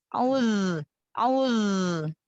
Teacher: Zal juga kasih sifat rokhwah mengalir suara ya. Jadi suaranya dialirkan.